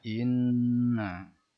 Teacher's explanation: Nun bertasjid adalah gunnah. Cara membacanya mendengung.